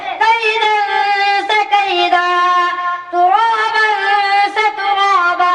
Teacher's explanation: مد عوض کا یہ قاعدہ ہے کہ جس کلمے کے آخر میں دو زبر والی تنوین پر وقف ہو رہا ہو تو تنوین الف سے بدل جائے گی اور تنوین والا حرف اس الف سے مل کر ایک الف کے برابر کھینچ کر حرف مدہ کی طرف پڑھا جائے گا